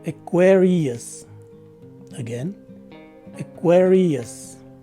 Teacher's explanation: The first letter A takes a SWA sound, and the second syllable with the letters Q, U, A, and R takes a K, W, E, R sound, rather with a short letter E in it. The letter I takes a long E sound, and the letter U takes a SWA sound. So the correct way to say this word is Aquarius.